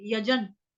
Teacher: य पूरा ज पूरा, ज के साथ आधा न जोड़ देंगे